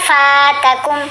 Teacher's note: ہے یہ حرف مدہ ہے اس لیے ہم نے پڑھا فاتکم، فا کو تھوڑا سا لمبا کیا